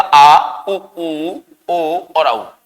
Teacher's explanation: पश्च भाग सक्रिय रहता है उसे हम क्या कहते हैं पश्च स्वर कहते हैं